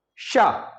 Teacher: तेजी से हवा बाहर निकलती है और मुंह में रगड़ खाती है, और इस रगड़ की वजह से हवा गर्म करती है, यानी उष्मा निकलती है, ऊष्म व्यंजन कहलाते हैं।